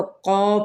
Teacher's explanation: क़ौफ आपको मैंने बताया था कि पुर लेटर है, हरूफ मुस्तालिया में से है, और साथ में अलिफ हरूफ शिबा मुस्तालिया में से है, ये इसके ताबे हो जाएगा।